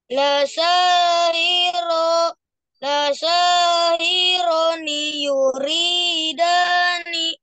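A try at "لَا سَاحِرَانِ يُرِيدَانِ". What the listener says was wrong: Nah, ro-nya yang kecepatan. Yang lain udah benar. Coba sekali lagi.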